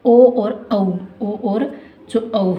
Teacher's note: कंठोष्ठ यानी कि कंठ और ओष्ठ की सहायता से जो बोले जाते हैं उन्हें कंठोस्थ ध्वनियां कहा जाता है